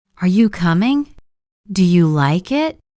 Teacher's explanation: Let's try some examples. Rising intonation when your voice goes up at the end, usually in questions. Are you coming?